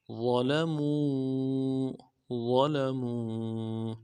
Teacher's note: میم کو واو مدہ واو کے ساتھ ملانا ہے، واو مدہ ایک الف جار میں کھینچیں گے